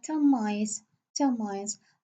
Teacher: when I say 10 mice, here I change the n into m. M and m are totally the same, okay?